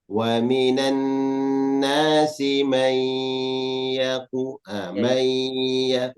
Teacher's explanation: Idgham bigunnah nun sukun bertemu ya